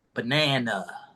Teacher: 1. The middle A has the 2, which is really the strongest. Nothing gets stronger than 2. The last A is a 1.